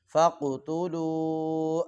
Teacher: یہ قاف ہے ساکن ہے اور اس کو اوپر ہم قلقلہ بھی کریں گے اور موٹا بھی کریں گے